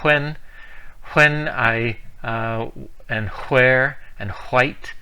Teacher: it's sort of like an H sound before a W sound but it's not really quite that either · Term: WH sound